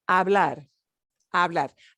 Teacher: no se pronuncia la H. You don't pronounce the H.